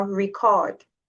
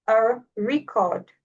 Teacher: The stress is on re in the noun and the and in the verb the stress is on record.